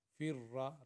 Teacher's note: را کو 2 دفعہ پڑھیں گے کیونکہ اس کے اوپر شد ہے